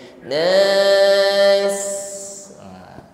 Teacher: Jangan lupa ditutup dengan huruf sin, tampakkan sifat sofirnya, desis yang mengalir